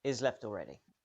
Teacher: listen again here the word he is shortened or removed so the sentence starts with a very short eye vowel linking to a z sound